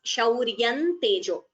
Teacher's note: शौर्यं tejo. So here there is a anuswara. Combine the sandhi and chant it as shauryan tejo. If you choose to split the sandhi, that is also correct as shauryam tejo.